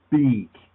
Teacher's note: So you see this area is very light, and then you begin going beak. And as soon as you open your mouth, you begin vibrating your vocal cords. And there's actually some vibration right before it.